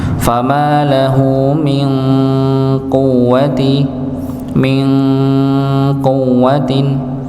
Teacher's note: Hukum nun sukun ketemu dengan qaf, yaitu dibaca dengan samar, ditahan ikhfa nggih. Fama lahu min quwwatin, ya maka ditahan.